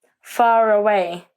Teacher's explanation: when a word ending with an R is followed by a word beginning with a vowel sound, we do pronounce the R in this special case. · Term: R sound